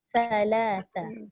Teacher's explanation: Dia macam mana cara nak menghalang daripada bunyi desiran? Hujung lidah kena keluarkan.